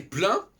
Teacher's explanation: Nous en français, si je dis plein, parce que ça ressemble à Klein, c'est plein, et bien j'entends pas le N. Plein, pleine.